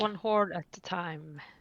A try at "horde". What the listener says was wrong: Please make sure you pronounce the D. Because you didn't that time.